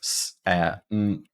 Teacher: even though we have an O in our writing for the second syllable, it will be reduced. So it's salmon.